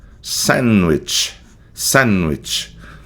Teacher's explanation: O esse D cai fora